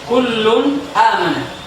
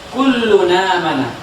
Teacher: ketika ada nun mati bertemu dengan hamzah ya, dan dia dari dua kata yang berbeda ya, maka dia dibaca naql